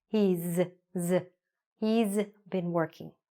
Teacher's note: even though there's an S, it sounds a little bit like a Z or a Z sound